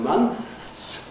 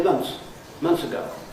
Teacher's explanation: we make it easier by dropping the th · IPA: /mʌns/